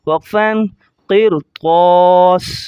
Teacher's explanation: قاف کو موٹا کریں گے، را کو موٹا کریں گے، طا کو موٹا کریں گے، تینوں موٹے ہوں گے، اور اسی طرح سین کی دونوں زیروں کو ظاہر نہیں کریں گے جب اسٹاپ کریں گے۔